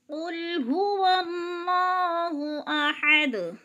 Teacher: قل قاف موٹے حروف میں سے ہے، پر کر کے پڑھیں گے اور لام کو ہلائیں گے نہیں۔ قل هو اللہ، ہا دو آنکھوں والا ہے، پر کر کے یعنی موٹا کر کے پڑھیں گے، اور اللہ پر پڑھا جائے گا اس لیے کہ اللہ سے پہلے لفظ واو کے اوپر زبر ہے تو اللہ پر پڑھا جائے گا۔